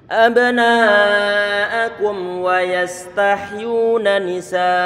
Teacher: Ini hati-hati ini saat mim sukun bertemu dengan huruf wawu. Kalau nggak hati-hati nanti akan ada unsur pengidghaman. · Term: izhar syafawi